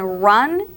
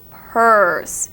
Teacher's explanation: the first sound R is uphill in Pitch whereas the second one in Pur is downhill Pur